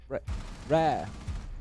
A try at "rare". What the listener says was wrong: Say rare. Just rare. It's not emphasising, mate. It's inserting syllables where they don't belong.